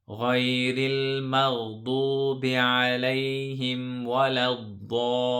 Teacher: the mud is a long mud here. We stretch it for 6 seconds. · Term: Maddul ladhim